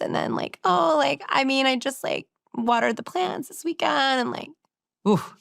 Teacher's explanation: kind of like a frying pan, where she's not using her full voice · the intonation, the end of the sentence goes up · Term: vocal fry